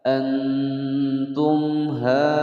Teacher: mat wajib mutasil, dibaca panjang 5 harokat atau 5 ketukan